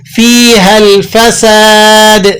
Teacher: فیہا الفساد، سین ہے یہ سین، فساد سین آ گیا، آپ نے باریک سیٹی کے ساتھ ادا کرنا ہے. اس میں سیٹی ضرور داخل کیجیے گا تاکہ اس کی آواز کا سا کے ساتھ اشتباہ لازم نہ آئے.